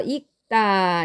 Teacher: 읽다의 경우도 자 여기 두 개의 겹받침이 쓰였는데 둘 중 하나만 살아남아야 됩니다. 이 경우에는 르가 탈락을 하고 그가 살아남게 됩니다